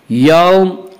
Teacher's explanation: ان یوم الفصل کان میقاتا، ان نون مشدد غنہ ہوگا، یوم واولین، واولین وہ واو جو ساکن اس سے پہلے زبر ہو، واولین کو نرم آواز کے ساتھ پڑھیں گے۔